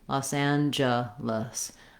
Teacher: And then our letters E, both E's, say the schwa sound.